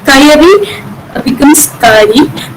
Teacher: Word internal syllable deletion is another type of deletion in syllable deletion, that is the word internal syllable gets deleted in some cases, resulting in compensatory lengthening · The second syllable ya gets deleted, and the previous syllable, preceding vowel a is lengthened here